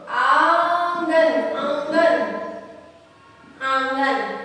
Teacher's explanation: नाक और मुंह दोनों का यूज होता है, दोनों मिलकर उसका उच्चारण होता है। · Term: अनुनासिक